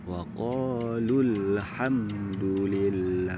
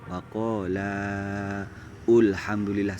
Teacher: Contoh yang pertama waqalu, itu jangan dipanjangkan tetapi langsung masuk ke hamdunya